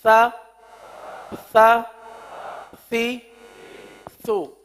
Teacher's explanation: سو میں پہلے تو زبان کا سرا لگ رہا ہے اس کے اپنے مخرج پر، یعنی اوپر کے دانتوں کے اندرونی کنارے پر، اور لگنے کے بعد فوراً ہی ہونٹ گول ہو رہے ہیں